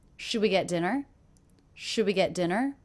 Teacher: do you notice in this question my voice does go up and pitch at the end